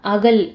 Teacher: அகல் சொல்லும்போது இல் அப்படின்றது என்னன்னா மேல் பற்களோட அடியை தொடுது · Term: லகரம்